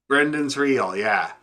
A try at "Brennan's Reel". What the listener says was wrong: Brennan, I think without the D. BRENN.